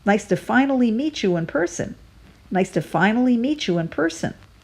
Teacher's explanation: Here we get two stresses, on the first syllable in finally and on the first syllable in person. After the chew and meet you, we roll right away into a W sound, so it flows and sounds like this.